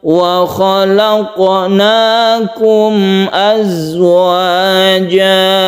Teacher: yang za ini tidak qalqalah, justru dia itu berdesir atau dia punya sifat sofir, artinya berdesis ya. Azwaja jangan dipantulkan.